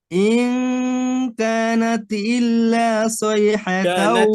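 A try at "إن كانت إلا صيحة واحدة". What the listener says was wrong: কানাত, তা কলকলা হয়ে যায় ভাই, তা কলকলা হয়ে যায়, কানাত, নাতে হয়ে যায়। ইন কানাত ইল্লা, কানাত ইল্লা, হ্যাঁ, ওই যে খেয়াল করতে হবে যেন সিন চলে না আসে, খেয়াল রাখতে হবে যেন সিন না চলে আসে।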